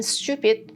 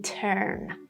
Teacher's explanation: TU making ch, like in stupid, is not the same for TU in turn. There's no ch sound here.